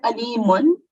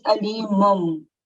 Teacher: we keep the meme sound in for a bit longer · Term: nasal sound